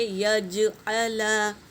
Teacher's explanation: یہ یج آواز آنا چاہیے کیونکہ یہ قلقلہ کا حروف ہے